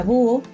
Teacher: En la palabra búho, la U se pronuncia con fuerza junto a la O.